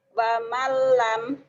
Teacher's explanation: non mati atau tanwin ketemu lam sama idgham bila gunnah. Dimasukkan dilebur tanpa ditahan.